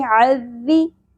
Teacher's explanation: عین وسط حلق سے ادا کرنا ہے، ذال کو باریکی سے ادا کریں گے